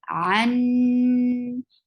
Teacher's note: you will keep the sound in your nose and it is a longer gunna. Anaf.